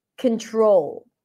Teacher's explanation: it is the long o as in go so even though there is an L right after which kind of like swallows the vowel it is still an O as and go so it feels